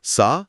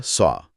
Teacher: सा के लिए आपका मुंह मुस्कुराने की तरह फैलता है। जबकि स्वाद के लिए होठ गोल हो जाते हैं।